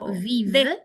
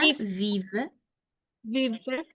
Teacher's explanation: La e final no la pronuncio. Viv. Te quedas en la B corta.